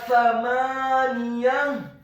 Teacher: Huruf mim-nya dibaca fathah 2 harokat karena harokatnya tegak